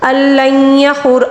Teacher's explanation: نون ساکن کے بعد لام ہے، یہاں پر ادغام بلا غنہ ہوتا ہے